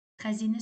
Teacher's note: Xəzinə sözündə təbii ki, i-ni uzun tələffüz edirik. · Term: i saiti